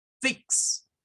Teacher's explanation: el sonido de la x es como una k y una s